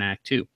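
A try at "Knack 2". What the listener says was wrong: There's a K there.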